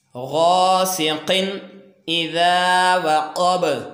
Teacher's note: ये तनवीन के बाद हमज़ा तख़लीकी, ये हरूफ़ इज़हार है तो इसको बग़ैर गुन्ना के हम इसको अदा करेंगे। इसलिए यहाँ पे हम क्रॉस लगाएंगे ताकि यहाँ पे समझ आ जाए कि इसकी अदायगी के दौरान यहाँ पे हम गुन्ना नहीं करेंगे।